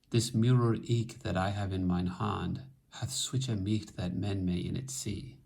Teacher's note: Chaucer's dominant system is 4 syllables, this metrical pause, the caesura, and then 6 syllables.